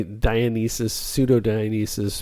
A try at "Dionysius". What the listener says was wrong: Dionysius, not Dionysus. Dionysius. You're missing a syllable there. There's an extra I at the end before the U, so it's a different...